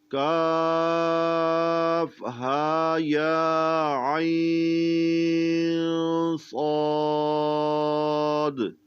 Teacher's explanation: عین نکالیں گے، عین حمزہ نہ بنے، عین نکلنا چاہیے وسط حلق سے